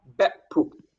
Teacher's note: So two syllables, both ending in glottal stop.